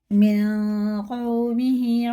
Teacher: اس نون کو ناک میں لے جا کے ایک الف کے برابر کھینچ کے پڑھیں گے، سائلنٹ کر کے پڑھیں گے اسے۔ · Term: اخفا